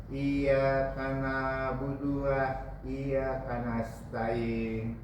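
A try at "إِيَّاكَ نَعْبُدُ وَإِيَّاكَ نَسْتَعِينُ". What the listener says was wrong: Iyyaka na'budu wa iyyaka nasta'in. Pakai nun, bukan pakai mim. Nasta'in, bukan nasta'in, bukan.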